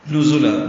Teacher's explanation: زا کو تیز صفیر کی آواز سے ادا کریں گے